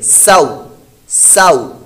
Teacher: حروف لین کو بغیر کھینچے بغیر جھٹکا دیے نرمی سے معروف پڑھیں گے